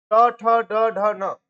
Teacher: ट ठ ड ढ न ये आपके क्या आएंगे? ये मूर्धन में आएंगे। · मुख के भीतर की छत का अगला भाग, के भीतर की जो छत है ना, छत का जो अगला भाग है उसको मूर्ध बोलते हैं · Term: मूर्धन ध्वनियां